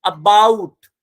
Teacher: शुरुआत में श्वा आ रहा है